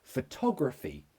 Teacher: So the stress is on to.